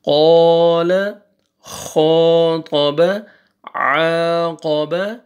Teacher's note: قاف کو موٹا کر کے پڑھنا ہے طا موٹا پڑھنا ہے عین صحیح پڑھنا ہے قال خاطب عاقب قالوا ساهون قولوا مصلحون